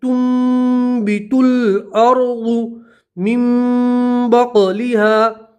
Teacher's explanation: اور یہاں نون ساکن کا قلب کا قاعدہ ہے کہ نون ساکن کے بعد با آتی ہے تو نون ساکن کو میم سے بدل دے